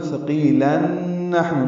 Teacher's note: آگے اگر ملا کے پڑھنا ہے تو ثقیلن نحن، نون پر تشدید لائیں گے، غنہ کریں گے